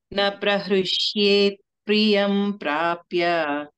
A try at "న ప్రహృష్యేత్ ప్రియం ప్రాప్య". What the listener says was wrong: ఆ కొంచెం దీర్ఘం ప్రహృష్యేత్